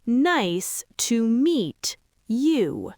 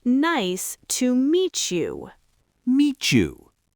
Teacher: When a word ending in a T is followed immediately by a word starting with a Y, those two sounds blend together and create a CH sound, like the CH in cheese. Meet you. · But in natural conversation, the T and the Y collide.